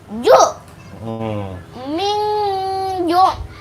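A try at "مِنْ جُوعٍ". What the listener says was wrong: Ju-nya panjang.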